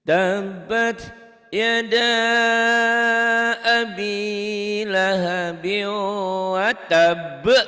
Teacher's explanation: Lahabiu ini ada tasdid yang warna coklat ditahan. Nyamber double ditahan dan dengung idgham bigunah.